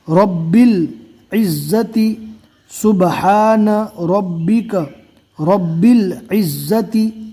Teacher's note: الف کو چھوڑ دیں گے، باقی زیر کو ڈائریکٹ لام سے ملائیں گے